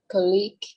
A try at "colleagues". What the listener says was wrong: Không, nó nhấn bằng một nhưng mà nó là âm G và thêm S kiểu thế.